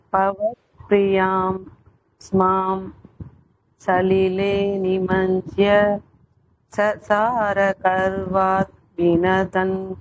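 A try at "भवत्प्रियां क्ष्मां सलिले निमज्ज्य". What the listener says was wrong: நீங்க அந்த சந்தசுக்கு தகுந்த மாதிரி சொல்ல மாட்டேங்கறீங்கமா நாலு லைனும் ஒரே மாதிரி இருக்கு நான் எப்படி சொல்லி கொடுத்தனோ அதே மாதிரி சொல்லணும்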